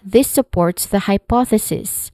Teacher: it starts with this which has which uses a voice th sound